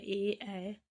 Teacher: इनका उच्चारण स्थान है कंठ व तालु। इन्हें हम कंठ तालव्य वर्ण कहते हैं।